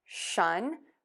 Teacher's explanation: Move to that short sound and then end with the N by touching the tip of the tongue to the back of the top front teeth. Air moves out of the nose for the shun or shus.